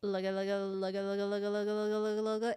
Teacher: It's like saying lugga, but the ga is like the lightest G sound that you could possibly make, like almost a false one.